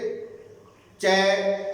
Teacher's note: अपनी जीवा सीधी टकराती है तालु से। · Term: तालव्य वर्ण